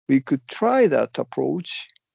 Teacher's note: you see how you're kind of going down, could try that approach. So you're going down and up. And that that's why I'm going up for try, personally. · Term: fall rise